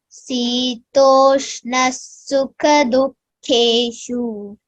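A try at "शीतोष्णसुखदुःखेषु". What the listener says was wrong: Shita, not Sita. Shitoshna sukha dukkeshu.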